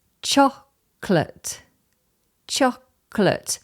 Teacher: There's no O in the middle there